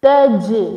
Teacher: Jim is the qalqala letter, so we make it prominent